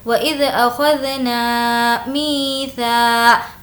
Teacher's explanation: می کو کھینچیں گے کیونکہ یا مدہ ہے۔ یا مدہ کا مطلب ہے یا جس پر جزم ہو اور اس سے پہلے زیر ہو۔